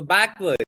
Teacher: So stress on the first syllable.